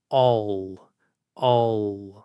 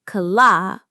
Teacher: It's the L that happens at the end of a word or syllable after a vowel, and it is completely different. With the dark L, your tip of your tongue doesn't have to touch behind your teeth at all. The magic happens at the back of your tongue.